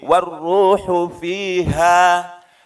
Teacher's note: ha di pangkal tenggorokan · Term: ha besar